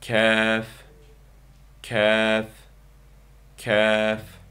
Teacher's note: Talaffuzi Uyghur tilidagi ki harfi bilan o'xshash. Talaffuzi tilning eng ichki qismining usti bilan ustunki qattiq tanglay orasidan chiqadi. Ya'ni qof harfining maxrijidan biroz yuzaki bo'ladi.